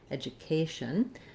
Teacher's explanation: when it comes to education, we have the stress on the K syllable. That letter A says the A diphthong.